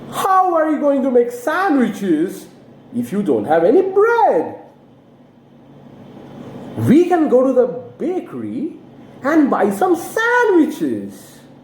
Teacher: The new word which has been introduced in the second sentence is bakery. And in bakery, your intonation has to fall. Why? Because it's a new information. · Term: falling intonation